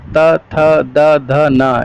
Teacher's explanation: इनका उच्चारण स्थान दांत है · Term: त वर्ग